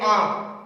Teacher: इसमें वायु है मुख तथा नाक दोनों से बाहर निकल रही है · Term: अनुनासिक ध्वनि